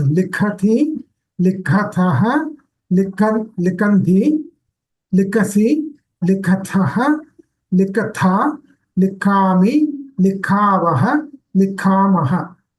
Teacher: This is Mahaprana. You are pronouncing it as Alpa Prana. · So we need that stress on the Ka Varga because it is Mahaprana.